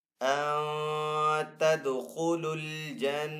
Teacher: جب نون ساکن کے اوپر یہاں پہ ہم غنہ کریں گے تو نون کو یہاں پہ چھپا کر ادا کریں گے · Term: اخفا